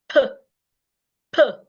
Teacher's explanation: i can't feel vibration it means that the P sound is a voiceless sound